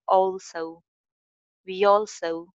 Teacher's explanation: E ke saath l jo hai wo aa raha hai, so isko thoda sa au shape mein leke jayenge.